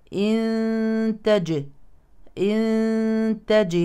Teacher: والجيم ساكنه اذا تقلقل · تخفى النون الساكنه لان الحرف التالي تاء